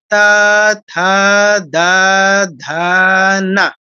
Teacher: তাহলে ত বর্গের সবগুলো কোথায় উচ্চারিত হচ্ছে দাঁতের গোড়ায় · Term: দন্ত বর্ণ, দন্ত ন